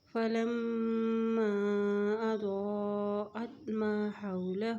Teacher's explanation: میم کے اوپر شد ہے اس لیے یہاں پہ غنہ کیا جاتا ہے، غنہ کرتے ہوئے الف کے اوپر مد ہے تو اس کو ہم لمبا کر کے پڑھیں گے۔